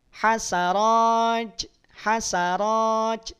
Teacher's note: juga bukan memakai ujung lidah dia makai punggung lidah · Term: bunyi c